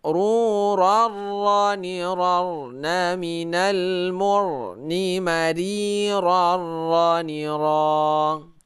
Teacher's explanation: Nah, ini hukumnya sudah beda. Ini sudah beralih ke hukum idgham bila gunnah ya, karena ini baris 2 bertemu dengan ra, kita baca tidak berdengung.